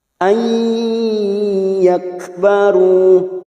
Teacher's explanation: nun sukun bertemu ya, idgham bi gunnah masuk ke dalam huruf ya dan ditahan selama 3 harakat